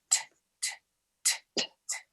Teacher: When you say the letter T in English, you are not using your voice.